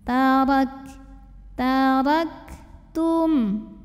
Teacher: Tapi dari segi angin keluar anginnya. Nah untuk kafnya yang sukun anginnya itu keluarnya belakangan setelah keluar suara.